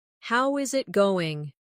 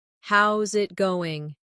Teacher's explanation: Becomes how's it going? The is disappears and the final G in going often softens. This is called connected speech.